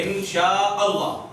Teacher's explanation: وہ اللہ کا جو الف ہے وہ حمزہ وصلی ہے. پھر حمزہ کو ہم ڈائریکٹ لام سے ملاتے ہیں. ان شاء اللہ اس طرح پڑھتے ہیں, ٹھیک ہے.